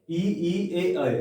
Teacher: जब आप उच्चारण कर रहे होंगे जीभ आपके मुख के अग्रभाग में होगी, आपके दंत के आसपास होगी। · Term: अग्रस्वर